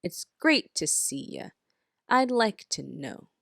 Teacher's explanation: in the middle of a sentence the word to the o in the word two is pronounced like a schwa